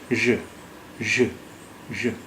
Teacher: اس آواز کو نکالنے کے لیے پہلے یہ سوچیے کہ شا کی آواز جب نکالتے ہیں شا، تو آپ کی زبان، آپ کی جیبھ آپ کے منہ میں کہاں پر ہوتی ہے. تو جہاں سے آپ شا کی آواز نکالتے ہیں وہیں پر جیبھ کو رکھیے، اپنی زبان کو رکھیے، اور پھر شا نہ کہہ کے وہیں سے ز کی آواز نکالنے کی کوشش کیجیے. تو وہ جو آواز ہوگی وہ ژ کی ہوگی، یعنی شا اور زا کی ملی جلی آواز ژ ژ ژ.